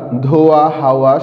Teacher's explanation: তরল ধ্বনি হিসাবেও পাচ্ছি বুঝতে পেরেছ অন্তস্থ ব এর উচ্চারণ অর্থাৎ ধ্বনিটি উচ্চারণের সময় দুই ঠোঁট গোলাকৃত হয়ে সংকুচিত হয় ও বাতাস বেরিয়ে যায় কিন্তু কোথাও কোনো স্পর্শ ঘটে না বাংলা ধোয়া হাওয়া শব্দের উচ্চারণে ধ্বনিটি পাওয়া যায় অন্যদিকে অন্তস্থ অ